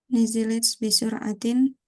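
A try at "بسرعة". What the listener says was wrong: Bisuratin nggak boleh. Bisur'ah.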